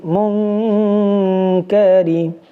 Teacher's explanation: আগে ছিল মিম নুন পেশ মুন, এখন মুন হবে না, এখন হবে মিম নুন পেশে মং, বাংলাতে অনুষ্কারের মতো উচ্চারণ হবে। মিম নুন পেশে মং, কাফ জবর কা, মং কা, র জের রি, মং কারি। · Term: ইখফা